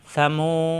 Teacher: সা জবর সা, মিম পেশ মু, মু মিলবে ওর সাথে, মু পেশের বামে অসাকিন, মাদের হরফ 1 আলিফ টান, সামু, জিবার আগা দাঁতের আগায় সা নরম করে